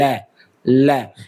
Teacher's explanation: आपके जीभ का जो अगला हिस्सा है वो ऊपर तलवे के ऊपर लग रहे हैं, तो ये पार्श्विक व्यंजन बोलेंगे, जीभ के पार्श्व भाग से ये बोला जाता है। · यानी कि जीभ के पार्श्व भाग से बोला जाता है। ल यानी कि आपके जीभ का जो अगला हिस्सा है वो ऊपर तलवे के ऊपर लग रहा है।